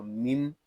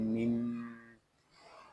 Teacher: میم شدد ہے، اس کو غننے کے ساتھ ادا کریں گے